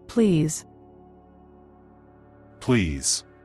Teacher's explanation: Буква S. Здесь также произносится как звук. З.